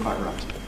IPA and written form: ˈkwaɪʔ ˈraɪt (quite right)